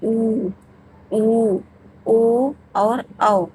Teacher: जब हम स्वरों को बोल रहे हैं तो जो हमारा ओठ है वो एकदम गोल हो जा रहा है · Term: वृत्त मुखी, वृत्तमुखी